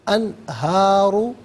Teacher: मिन तहतिहिमुल अनहारो, अनहारू में नून साकिन है, इसके बाद हरफ हल्की हा आ रहा है तो नून साकिन को इजहार के साथ पढ़ेंगे, गुन्ना या इख्फ़ा नहीं किया जाएगा।